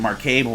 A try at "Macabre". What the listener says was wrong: Silent R, brother. Silent R. Macabre.